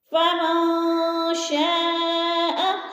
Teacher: شا پہ مد متصل ہے، چار الفی مد ہے، چار الف کے برابر اس کو کھینچ کر پڑھنا ہے